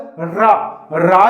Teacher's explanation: रा का उच्चारण स्थल मूर्धन्य है, क्योंकि ये मूर्धन से टकराता है।